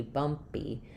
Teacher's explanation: This p is unaspirated. Um I'm still going to write it with the letter p, but it sounds a little bit like a b.